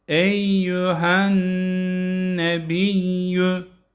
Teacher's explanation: Yüyü de çekmeyelim. Çoğu okuyucular yüyü çekiyorlar.